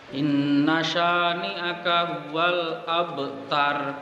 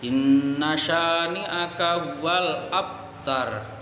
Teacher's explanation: Abtar di situ baknya berharokat sukun dan dia harus dipantulkan. Pantulannya ringan saja karena qalqalah sughra.